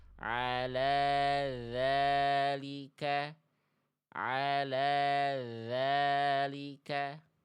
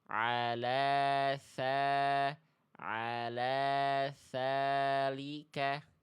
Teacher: Kalau dalal enggak keluar nafas, kalau tsa ada angin berhembus. Nah, jadi pada praktiknya ya dibacanya kalau keluar nafas jadinya bacaan yang salah.